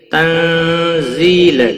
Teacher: تنزیل نون ساکن کے بعد حروف اخفاء کا زا آیا ہے، اخفاء حقیقی ہوگا، زی یا مدہ ہے، 1 الف کے برابر کھینچ کر پڑھیں گے